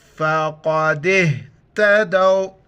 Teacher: قاف کو موٹا کر کے پڑھیں گے اور دال کو ہا کے ساتھ ملائیں گے دال واو زبر